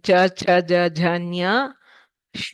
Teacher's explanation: we pronounce the cha cha ja jhanya these days in front, just behind the teeth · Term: talavya